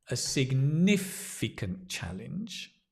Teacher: The accent is on the ni.